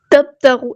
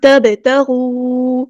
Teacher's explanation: با ساکن ہے تو کلکلا ہو رہا ہے، واؤ مد آیا تو 2 کاؤنٹ لمبا کریں گے.